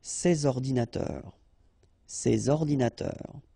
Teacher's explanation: So you should make the liaison between S and O.